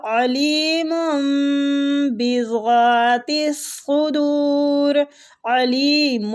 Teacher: تو ہم نے جب نون ساکن کے بعد با آئے تو اس رول کو ہم نے پڑھنا ہے، تو ہم نے نون ساکن کو میم کے ساتھ بدل دینا ہے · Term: میم بعد